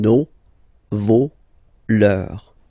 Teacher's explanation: even if you've got this final S, you don't pronounce it, as it was the case already for this word, no, you don't pronounce the final S, vos, you don't pronounce it, leur.